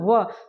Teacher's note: क्या होता है कि ओठ सेवा जैसे बोल रहा है व हमारा दांत भी स्पर्श कर रहा है और हमारा ओठ भी स्पर्श कर रहा है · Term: दंतोर, दंतोष्ठ